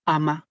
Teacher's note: Muchos de nosotros suprimimos la consonante, ¿cierto? Al inicio de la palabra y decimos ama. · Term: aféresis